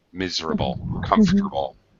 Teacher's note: drop that middle vowel sound